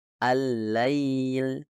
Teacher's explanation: lam dan kesalahan terdengar seperti allail allail dan solusinya adalah dengan menekan tepi depan lidah pada tempat yang tepat yang memungkinkan udara keluar dari kedua Sisi lidah